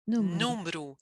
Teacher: So it's almost like that E in the middle. It's almost like it's totally muted, and we just kind of chop it off and say número.